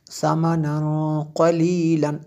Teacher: یہاں پہ یہ جو میں نے غنہ کیا یہاں پہ اخفا ہو رہا ہے، قاف ہے تنوین کے بعد، تو اس لیے یہاں پہ اخفا ہو رہا ہے۔